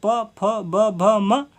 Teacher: होठ यानी कि जो होठ से बोले जाते हैं